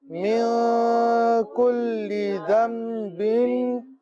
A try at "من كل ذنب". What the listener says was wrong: اچھا یہاں پر کل ذنب چھوٹا سا میم لکھا ہوا ہوتا ہے، نون نہیں پڑھیں گے، میم ہی پڑھیں گے، اقلاب کا قاعدہ ہے، تو ذنب پڑھیں گے، ذم صحیح ہے، نون نہیں پڑھیں گے۔ من کل ذنب،